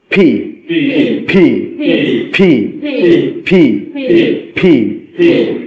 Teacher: দুই ঠোঁট বন্ধ করবেন, জোরে বাতাসটা ছাড়বেন।